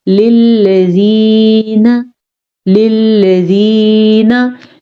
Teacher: मद्दा का मतलब ही यही है, खींच के पढ़ना। तो या साकिन से पहले जेर है, ये या मद्दा है, इसे हम खींच के पढ़ेंगे